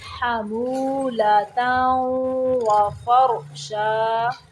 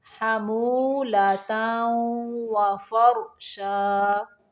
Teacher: را ساکن کے پچھلے حرف کے اوپر زبر ہے تو را کو ساکن کرتے ہوئے موٹا پڑھیں گے